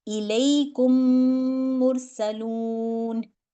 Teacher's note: तो इसमें गुन्ना भी करना है اور مجھے اس میں ایک میم دوسرے میم میں جائے گا، تو کاف کی جو ساؤنڈ ہے وہ میم کے اندر چلی جائے گی، پہلا ساکن سکون والا ختم اور اگلا میم اس کے اندر مرج ہو جائے گا